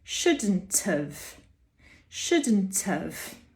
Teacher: we're saying shouldn't have but we pronounce the have as of · we often cut the h and we begin the word with a vowel. So there we need to join the t up onto the vowel. · if we have a vowel phoneme after the shouldn't, we join a t, the t that you expect, up onto the vowel. So in the case of shouldn't have, that little have is weak, it's unstressed.